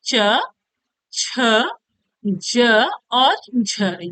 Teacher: आपका च वर्ग का प्रथम चार अक्षर च छ ज और झ ये आपका क्या है स्पर्श संघर्षी व्यंजन है